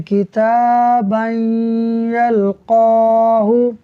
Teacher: तनवीन के बाद या हुरूफ यरमलून में से है तो हम गुन्ना करते हुए इसको पढ़ेंगे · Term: इदगाम